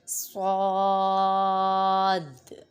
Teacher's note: صاد، ادھر دیکھیں الف سے پہلے زبر ہے، الف مدہ ہو رہا ہے اور اس کے بعد سکون اصلی آ رہا ہے۔ یہاں پر مد لازم ہوگا اور مد لازم کو 3 الف یعنی 6 حرکات تک کھینچ کر پڑھیں گے، اور دال ساکن ہے تو دال پہ قلقلہ ہو رہا ہے کیونکہ یہ حروف قلقلہ میں سے ہے۔